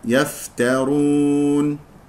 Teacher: ممكن ان تفخم لان جاوره الراء تقول يفترون خطا يفت يفترون الراء مفخمه لانها مضمومه